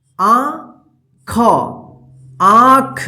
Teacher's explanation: चंद्रबिंदु के जो उच्चारण होगा वो जो है ना नाक और मुंह की मदद से होगा और उसके उच्चारण में लघुता होगा, यानी जल्दी उच्चारण हो जाएगा, ठीक है।